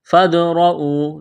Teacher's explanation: فادرؤوا دال ساکن ہے قلقلہ کریں گے دال پر